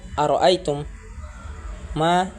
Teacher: Kemudian pada ayat keempat, pada lafaz ara'aitum ma terdapat hukum bacaan idgham mislain atau mutamathilain, yaitu apabila mim sukun bertemu dengan huruf mim, maka cara membacanya memasukkan mim pertama kepada mim yang kedua dengan mendengung